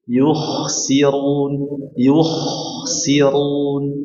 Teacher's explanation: bunyi kha dipertebal, suara kha dinaikkan ke langit-langit mulut bagian atas